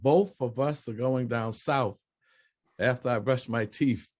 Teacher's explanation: if the TH is at the end of a word, it has an F sound